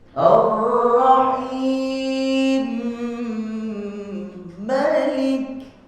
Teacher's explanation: dia mengidghamkan mim yang pertama ke dalam mim yang kedua bersama dengung dua harakat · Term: idgham kabir